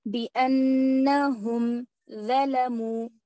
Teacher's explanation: ظلموا وا موٹا پڑھنا ہے زبان دانتوں کے باہر آنا ہے